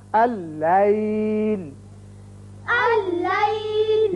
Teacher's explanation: یہ دیکھیے پہلا لام لکھا تو گیا لیکن پڑھا نہیں جائے گا. یہ حمزہ بشکل الف اس لام سے تشدید کے ساتھ ملے گا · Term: ادغام